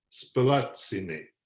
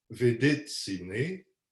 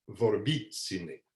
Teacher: On voit qu'à la première conjugaison, on va avoir spelatsine, avec accent sur l'avant-avant-dernière syllabe, c'est-à-dire l'antépénultième. Même chose à la 2e conjugaison, vedetsine, et à la 4e, vorbitsine.